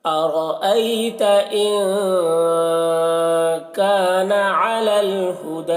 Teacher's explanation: ہدا کھینچ کر یہاں پر وقف کریں گے اور یا کو نہیں پڑھا جائے گا